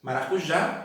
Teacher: Maracujá, o já é o mais forte. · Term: sílaba tônica